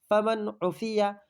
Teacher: نون ساکن کے بعد حروف حلقی کے 6 حرفوں میں سے عین آیا ہے، اس لیے اس کو ظاہر کر کے بلا گنہ کے جل پڑھیں گے، اس کو اظہار حلقی کہتے ہیں۔ من اخیہ، میم نون زیر